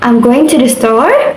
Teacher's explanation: Question, I'm going to the store. Intonation rises at the end.